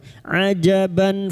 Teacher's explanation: Linnasi ajaban, ajaban huruf ain, jangan tertukar hamzah. Huruf ain wastul halqi atau tengah tenggorokan. Ajaban fathah tanwin pada huruf ba ini, fathah tanwin bertemu hamzah idhar halqi.